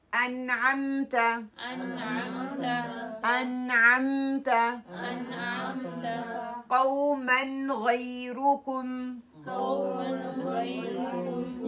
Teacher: नून का साउंड आ रहा है लेकिन हम इस पर रुक नहीं रहे हम उसको होल्ड नहीं कर रहे हम बस उसका नून क्लियर करते हैं और पढ़ते जा रहे